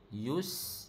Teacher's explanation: Bagi angin sin tu kena kuat sikit.